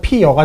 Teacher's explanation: 피어 같은 경우에 이하고 어가 만나서 모음끼리 충돌하잖아요. 모음끼리 충돌하기 때문에요, 중간에 반모음 이가 덧붙습니다. 그러면은 이 반모음 이하고 어하고 더해지죠. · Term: 반모음 첨가